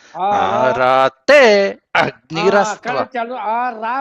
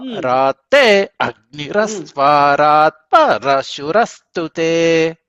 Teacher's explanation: రా కూడా కిందకు వస్తున్నది. రా అనేటువంటిది స్వరితం.